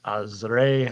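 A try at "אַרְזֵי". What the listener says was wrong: Lo azre ela arze.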